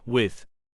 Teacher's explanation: voiced dental non-sibilant fricative